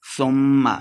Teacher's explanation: ثم میم مشدد ہے, غنہ کر کے پڑھیں گے